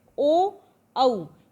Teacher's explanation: कंठोष्ठ्य, यानी गले से आवाज़ निकलती है लेकिन होठों का इसमें प्रयोग होता है।